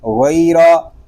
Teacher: یا لین اس لیے ہو رہا ہے کہ یا ساکن سے پہلے زبر آ گیا ہے۔ را اس لیے پر ہے کہ را کے اوپر زبر آ گیا ہے۔